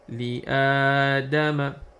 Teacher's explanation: if the letter Hamza is between Lam and Alif, then we have to join that Hamza with Alif and make it and stretch it for 2 counts, for 2 seconds